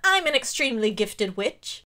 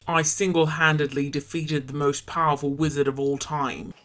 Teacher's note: they're both pitch changed for me to be lower and they're both British accents they're just whiny